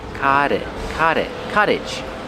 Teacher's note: Pronunciation, the T makes a fast D.